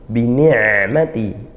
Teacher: ain sukun dialirkan, sedang tawassut atau bainiyah di antara ngalir lepas dan ditahan, tapi dia tengah-tengah ngalirnya.